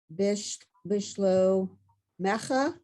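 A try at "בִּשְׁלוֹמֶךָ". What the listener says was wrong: Good. Bishlomecha. Exactly right.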